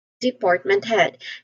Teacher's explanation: the second syllable part which is our primary stress. It is pronounced with a long uh vowel sound